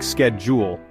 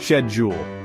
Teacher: In the US, people pronounce schedule with a hard SK sound, like schedule, but in the UK, it's all about the softer esh sound, schedule.